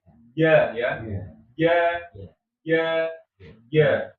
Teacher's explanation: kalau kita lihat dari makhrajnya kan dia termasuk tengah lidah dan dia menempelnya kuat dengan langit-langit.